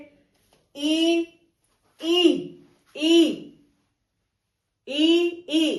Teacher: इ यानी जो जिव्या है वो तालु को स्पर्श कर रही है। इ दोनों का उच्चारण स्थान होगा तालु।